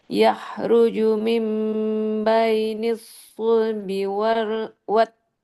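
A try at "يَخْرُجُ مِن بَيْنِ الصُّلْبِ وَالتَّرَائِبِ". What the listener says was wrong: Kho-nya tebal, ru-nya tebal. Ya, ru. Ya, ruju mim. Taro, ro-nya tebalkan. Tambah lagi tebalnya. Taro.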